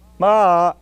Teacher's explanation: Now, on a purely phonological level, that sound begins with an attack, an ictus, ma, and ends in a descending glide